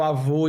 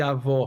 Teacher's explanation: Sempre marcado em vogal. Assim, é uma vogal que não abre tanto, né?